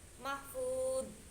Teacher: ujung lidah bertemu dengan ujung gigi, jadi kayak digigit seperti huruf dal